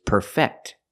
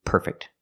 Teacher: We move the stress to the second syllable.